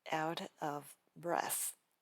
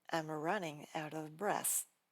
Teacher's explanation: The problem is the V sound requires your upper teeth and the lower lip, but the B in breath requires both lips. When you try to move from V to B, it creates a massive traffic jam.